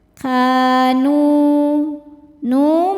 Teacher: Sebab ada alif sebelumnya baris fathah. Cara bacanya panjang dua harakat. Kanu nu mad thobi'i zohiri.